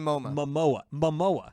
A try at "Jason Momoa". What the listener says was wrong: You either say MoMA or Momoma. It's Momoa.